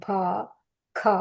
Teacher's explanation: Mahaprana is where we give that ha sound